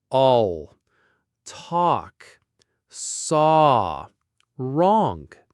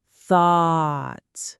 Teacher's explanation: Thought has the rounded back ah sound.